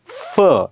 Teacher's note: तर खालच्या ओठांनी आणि वरच्या दातांनी उच्चार केलेला आहे. म्हणून त्याला इंग्रज बायलॅबियलच्या कॅटेगरीमध्ये टाकत नाहीत, तर त्याला लॅबिओ डेंटलच्या कॅटेगरीमध्ये टाकतात.